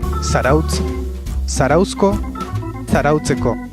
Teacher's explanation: si acaba en africada, se convierte en fricativa al añadir el sufijo. Zarautz, zarauzko, zarautzeko.